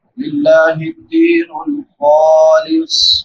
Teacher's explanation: لفظ اللہ سے پہلے زیر ہے لفظ اللہ باریک ہوگا